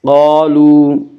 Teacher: قاف کو پر پڑھیں گے، قاف حروف مستعلیہ میں سے ہے۔